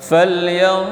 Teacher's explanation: Falyanzu, itu sama posisi dha. Nun mati jumpa dengan dha. Ikhfa. Bacaannya samar-samar dan dengung. Dibaca dengung.